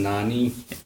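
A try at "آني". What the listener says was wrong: नानी नहीं आप आनी पढ़े ना, क्योंकि नून तो पिछले वर्ड का पार्ट है, आनी की आवाज आ रही है, नहीं आप देखें ना, देखा करें आनी, आप इसे देखा करें ता है और आनी है,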